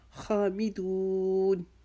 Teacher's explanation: خا کی آواز کو رگڑ سے، گلے کی رگڑ سے نکالیں گے